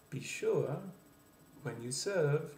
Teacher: You'll notice that the inflection builds throughout the sentence. · The French accent tends, in American English and to the American ear, to go up quite a bit, especially at the ends of what are called in French rhythm groups.